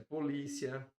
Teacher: A primeira letra do ditongo é o I, depois vai para o a. Então, do I para o A, o som sobe